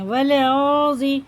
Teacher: دیکھیے یہ الف نہیں پڑھیں گے، واو کو لام میں لگاتے ہوئے پڑھیں گے